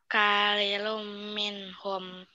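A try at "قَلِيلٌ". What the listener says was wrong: Walau kolil ini kok itu sayang huruf kop.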